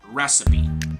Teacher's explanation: So the stress is placed in the first syllable.